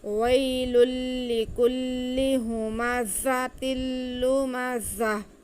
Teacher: یہ بھی تنوین کے بعد لام آ رہا ہے، تو یہاں پہ ادغام ہوگا، ادغام بلا غنہ، یعنی کہ تنوین کے ساتھ دو زیر کے ساتھ لام کو ملائیں گے لیکن غنہ نہیں کریں گے